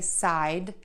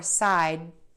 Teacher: You can say side with a slight little release of air, or side where you just hold the tongue behind the back of your top front teeth and you don't release the air.